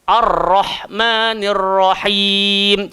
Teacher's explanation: Sebab ra ni dia hanya melibatkan hujung lidah. Langgar di langit atas. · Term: Huruf ra, huruf ra